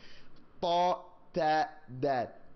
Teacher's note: You press up against your teeth, and you use the top ending part of your tongue.